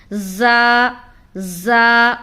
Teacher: رال کو باریک ادا کریں گے، سیٹی کی آواز نہیں آئے گی۔ زا کو ہم سختی سے ادا کرتے ہیں، آواز میں سیٹی کی سنائی دے گی